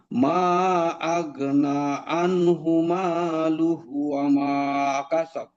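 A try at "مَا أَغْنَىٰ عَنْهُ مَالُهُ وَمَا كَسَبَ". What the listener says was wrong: এই যে আগনার মধ্যে কিন্তু একটা মাদ আছে, মা আগনা আনহু মালুহু আমা কাসাব।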